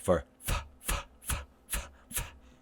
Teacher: Notice that the lips are not closed, and that the top teeth are go to the bottom lip. That's so we're creating some friction there.